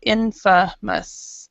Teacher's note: we're stressing the first syllable in, and the third syllable mus